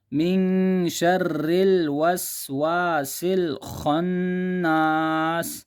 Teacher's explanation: وسواس میں جو سین ہے اس کو بھی سیٹی دیں گے